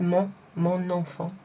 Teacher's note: So we've got mon in front of it, mon enfant. And you kind of pronounce the N because it's in front of a vowel